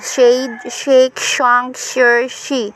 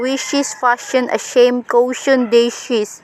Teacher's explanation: The alveopalatal fricatives. Voiceless alveopalatal fricative.